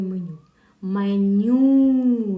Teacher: меню наголос падає на другий склад на літеру ю